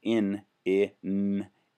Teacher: I mean, but when I say in in the N starts to take over the sound of the I so it's harder to hear. But if you go and and plugged your nose, that may help you separate them a little bit.